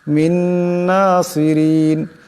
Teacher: মিন নাসিরিন এখানেও নুন সাকিন, নুন সাকিনের পর নুন আসছে, ঈদগাম হয়ে যাবে, ঈদগামের একালে পরিমাণ গুণ্য হবে